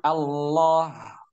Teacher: pada setiap lafaz Allah, baik tebal maupun tipis, semuanya dibaca 2 harokat